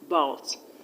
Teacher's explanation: a schwa sound can never be stressed. So the stress is on the second syllable